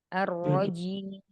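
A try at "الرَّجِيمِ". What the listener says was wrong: Tanpa ditarik bibirnya ke belakang.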